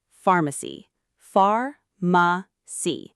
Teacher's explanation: The stress is on the first syllable, not the second.